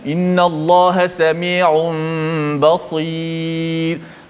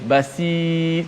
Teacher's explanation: Letak sad tu dibaca baris bawah tebal. Tak boleh basir.